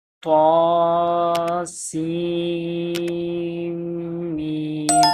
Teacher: سین کو میم کے ساتھ ملائیں گے کیونکہ میم کے اوپر شد پڑا ہے